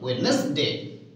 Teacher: D here is silent, Wednesday.